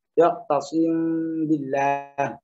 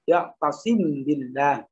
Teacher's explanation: kalau dibaca ikhfa kan gunahnya harus diperjelas dengan tempo 2 harokat.